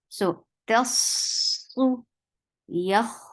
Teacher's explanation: dhamma is very short, but your lips should be very much nicely circled.